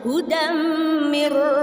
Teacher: Itu bacaan idgham bila gunnah. Masuk tapi tanpa dengung ya.